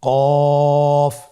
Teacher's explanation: কফের মাখরাজ হলো জিহ্বার গোড়া তার বরাবর উপরে তালুর সঙ্গে লাগিয়ে উচ্চারিত হয়